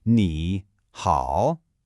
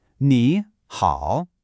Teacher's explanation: Both characters have what's called a third tone, which is kind of like a little dip, right? Your voice goes down, and then it comes right back up.